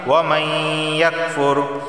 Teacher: یہاں دیکھیں نون ساکن کے بعد یا آیا ہے اور یا حروف یرملون میں سے ہے، حروف یرملون 6 ہیں، ان 6 حرفوں میں سے ایک حرف یا ہے، تو نون ساکن کے بعد یا آ گیا ہے تو ادغام اور غنہ دونوں ہوں گے۔ ادغام کیا، یعنی کہ ہم اس نون کو یا میں داخل کر دیں گے۔ ادغام کا معنی ہوتا ہے ایک چیز کو دوسری چیز کے اندر ملا دینا، تو اس نون کو ہم یا میں ملا دیں گے۔ · لفظ اللہ سے پہلے زیر آیا ہے تو لفظ اللہ کو باریک پڑھا جائے گا